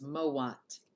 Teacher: W is coming from the labialized M, and it's metathesizing with the first vowel of the diphthong, creating a 2-syllable word. And that's the only place where we ended up creating 2 syllables out of a single syllable so far. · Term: metathesis